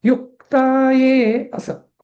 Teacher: युक्ताये म्हणजे तो क हा आघात देऊन म्हणायचा आहे